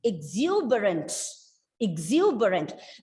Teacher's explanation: you are stressing on the second syllable